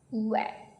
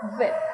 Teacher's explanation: New learners often confuse w with v sound. Remember, w is made with rounded lips, wet, and v is made by touching your top teeth to your bottom lip, vit.